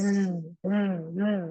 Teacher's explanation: Ada tambahan suara ya yang keluar dari kedua bibir karena aliran suara yang sempit sehingga menyerupai suara burung desis gitu ya. Apa dibilang suara ular, apa dibilang suara burung ada s-nya gitu ya. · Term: sifat asofir